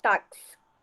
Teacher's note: na palavra táxi, a letra X vem com o som de KS, que forma táxi.